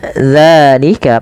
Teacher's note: panjangkan zanya 2 harakat karena ia mad tabi'i